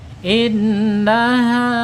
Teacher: Innaha ya mad th'i ya. Lihat ha fatahnya ketemu dengan alif ya. Panjangnya dua harakat. Satu alif atau dua ketukan ya.